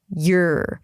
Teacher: You want to make sure that you pronounce the E sound clearly before you bring the tongue up for the R.